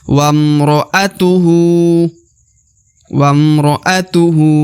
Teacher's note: Kemudian huruf hu di ujung dibaca 2 harokat ya. Perhatikan karena di atasnya terdapat harokat u terbalik ya. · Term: panjang 2 harokat